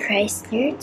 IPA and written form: ˈkraɪslər (Chrysler)